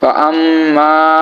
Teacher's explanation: আমরা জানি নুনে বা মিমে তাজরি হলে গুন্নাক্ষ করে পড়তে হয় সো এখানে ফা আম্মা গুন্না হবে এবং প্লাস এক আলিফ টান হবে কি কারণে জবরের বাম পাশে খাইলে আলিফ থাকার কারণে ঠিক আছে